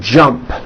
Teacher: The final sound in jump is a P, which is unvoiced. So when you put it in the past tense, all you do is add a T.